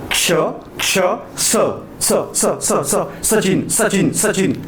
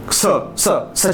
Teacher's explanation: सचिन बघा असं म्हणताना घासत आहे तो स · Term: घर्षक